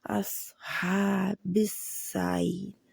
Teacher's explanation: صاد موٹا رہے گا اور سیٹی کی آواز ہے۔ موٹا کیسے کرتے ہیں؟ زبان کی جڑ پیچھے سے اوپر اٹھاتے ہیں۔ اصحاب السعیر، ہا حروف حلقی ہے، عین اور ہا ایک ہی جگہ سے نکلتے ہیں، حلقے درمیانی حصے سے، ان کو ذرا سا رگڑ کی جیسے ہا اور ہوا بھی باہر آ رہی ہوتی ہے۔